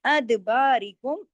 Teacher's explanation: اد دال پہ کلکلا کیجئے، باقی تمام باریک حروف ہیں